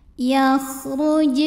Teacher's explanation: huruf qalqalah yaitu jim yang sukunnya asli dan ada di tengah bacaan, maka dibaca memantul dengan pantulan yang kecil. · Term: Qalqalah Sugra, qalqalah sughra